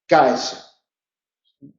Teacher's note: Un fonema velar oclusivo sordo más un fonema alveolar fricativo sordo